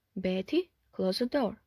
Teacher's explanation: at the beginning of the sentence it always forms a separate sense group and usually takes a falling rising tone